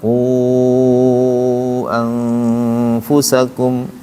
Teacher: Sebelum ketemu hamzah qu mad tabi'i. Qu mad tabi'i. Saat ketemu hamzah panjang. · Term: mad jaiz munfasil